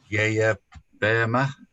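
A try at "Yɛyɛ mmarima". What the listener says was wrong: Now, very good, but not right. The last word, which is men. Now, what you said was man. We are man. We are men.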